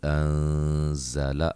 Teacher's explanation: نون ساکن کا اخفا ہے